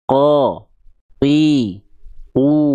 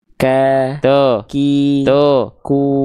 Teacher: Kalau Kaf dia pasti agak ke depan